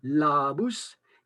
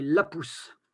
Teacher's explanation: devant un P, qui est une consonne qui n'est pas sonore, elle ne fait pas vibrer les cordes vocales, eh bien, on va avoir un A bref